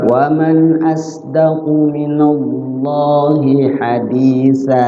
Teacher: Asdaqu minallah dibaca lafzul Allahnya tafkhim. · Nah, kemudian lihat lagi huruf terakhir berbaris tanwin fathatain di ujung kalimat, di akhir kalimat ya. Hukum bacanya mat iwat lid jadi panjang. Hadisan jadi hadisa.